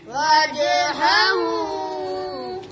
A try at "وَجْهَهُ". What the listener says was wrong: नाक में नहीं हु وجهه